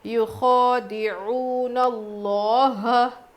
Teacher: لفظ اللہ کے لام سے پہلے زبر ہے تو موٹا پڑھنا ہے